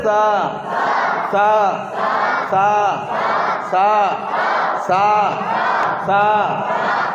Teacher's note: সিটি উচ্চারণ হবে না, সা এই সিটিটা উচ্চারণ হবে না, তোতলা ভাব · সাটা তোতলা ভাব, জিভের ডগা নিচে দাঁতের গোড়ায় লাগাতে হবে, আর উপরের দাঁতের কিনারাটা জিভে আসতে ঠেকাবেন একটু উপরে, দাঁতের মানে জিভের ডগার একটু উপরে।